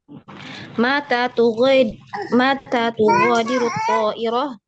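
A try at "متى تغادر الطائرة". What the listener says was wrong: Matanya yang panjang di ta, bukan di ma.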